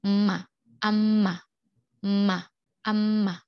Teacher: Nasal yaitu bunyi yang dikeluarkan dari hidung, tapi dengan dengan melibatkan bilabial atau dua bibir atas dan bibir bawah